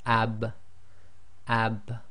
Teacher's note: you can feel the wet portion of your lips come together